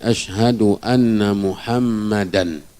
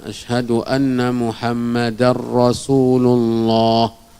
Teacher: tanwin berjumpa dengan ro dalam hukum tajwidnya idgham ya Maka langsung dimasukkan bunyi rnya